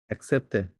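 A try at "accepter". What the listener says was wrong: না, এক না, এটা আ, এর এই ফরাসিতে এ হচ্ছে আ শব্দ, হ্যাঁ, তাহলে আক কি হবে? আসে আক, আকসেপ্তে, আকসেপ্তে, ঠিক আছে, হ্যাঁ, হ্যাঁ, হ্যাঁ, এটা তো ইংরেজিতেও তো একই কথা, তাই না? অ্যাকসেপ্ট, right. প্রথমটা ক, পরেরটা স, তো এটা ফরাসিতেও আছে, আকসেপ্টে।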